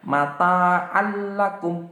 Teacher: Jadi masukkan idgham itu masukkan bila gunnah tanpa dengung. Jadi bacanya itu tidak didengungkan tapi dimasukkan.